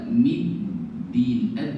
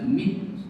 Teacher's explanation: Jadi bunyi dalnya getaran dalnya tetap jalan. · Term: dal bertasydid